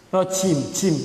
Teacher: jim itu hurufnya huruf jahr, ditampakkan tapi tidak hamas.